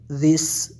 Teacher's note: سین کو دبا کے پڑھیں گے، سیٹی کی سی آواز آئے گی